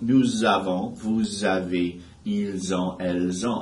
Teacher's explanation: So especially with the plurals, nous avons, vous avez, ils ont, elles ont. I'm making a Z sound with those final S's that normally are not pronounced. By itself, it's just nous. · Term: liaison